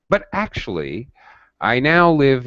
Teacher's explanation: a sharp rise in voice